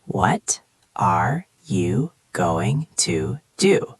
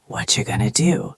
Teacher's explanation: But in a real conversation, it becomes what you're going to do. It's faster, it flows, and the t sounds almost disappear.